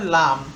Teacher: জিহ্বার অগ্রভাগের কিনারা সামনের উপরের দাঁতের সাথে লাগিয়ে উচ্চারিত হয়